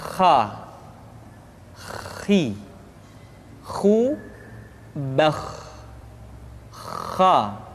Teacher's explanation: Kha, pangkal tenggorokan. Diucapkan dengan mengalir nafas. Atau lebih praktisnya, pengucapan huruf kha persis terdengar seperti orang yang tidur dalam keadaan mengorok.